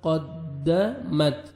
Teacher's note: نفسم ما, الف مدہ, 1 سیکنڈ میم کو کھینچنا ہے, قاف کو موٹا کر کے پڑھیں گے. قد, دال مشدد ہے, سختی سے آپ نے ملانا ہے قاف کو دال کے ساتھ